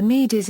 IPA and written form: miːdz (Medes)